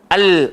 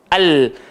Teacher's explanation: Rasa tak hujung lidah kita dia tak langgar gigi tapi langgar lelangit, tapi dia belakang gigi. Al. Kalau kita ke belakang sikit lagi dia keluar nun. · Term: lam